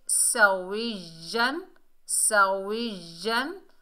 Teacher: सीन को सीटी से अदा करेंगे, सख्ती से अदा करेंगे। वाव के नीचे ज़ेर है, आगे या मुशद्दद है, वाव को या से मिलाएंगे।